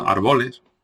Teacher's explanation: Tendencia a convertir en llana la esdrújula